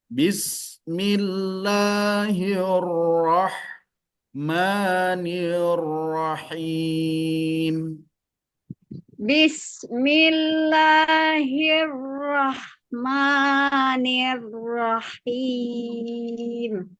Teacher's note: Huruf sinnya dan huruf hanya ketika sukun alirkan udaranya. Karena memiliki sifat hames.